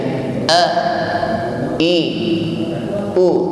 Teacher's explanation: huruf hamzah diucapkan dengan jahr. A, i, u, tidak boleh lembek atau ngambang.